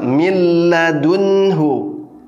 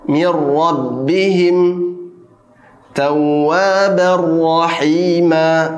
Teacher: Jadi cara membacanya adalah dileburkan, ya, dengan cara meleburkan huruf pertama yaitu huruf nun sukun kepada huruf-huruf idgham bila gunnah. Seakan huruf nun sukun ini tidak ada dan tanpa didengungkan, tidak ditahan artinya, ya, langsung dibaca ke huruf berikutnya.